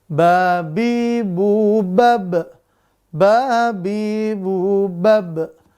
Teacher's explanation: ba itu makhrajnya di kedua bibir. Kita rapatkan kedua bibir kita. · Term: huruf ba